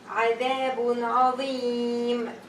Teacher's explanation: So tanween turn into sukun. Long vowel ya. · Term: voluntary mad